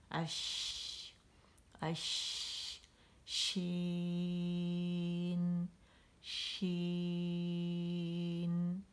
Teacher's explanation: इसमें बारीकी का कैसे पता चला कि सेंटर उठा हुआ है मखरज की अदायगी के लिए, लेकिन ज़बान की जड़ नीचे है